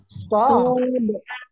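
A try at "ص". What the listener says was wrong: sod, sod, bukan so saja, tapi sod.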